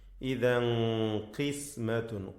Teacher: തൻവീനിനെ ഇഖ്ഫ ഹഖീഖി നൽകി അവ്യക്തമാക്കി മണിക്കണം